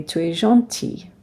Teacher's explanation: So we don't pronounce the S on E. We don't pronounce the L on gentil.